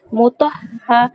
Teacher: হায়ের উপর যেহেতু এখানে তাসদিদ আছে, তাই হা অক্ষরটাকে দুবার পড়তে হবে